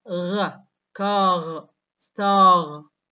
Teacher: uvular R, where the back of the tongue is against the uvular.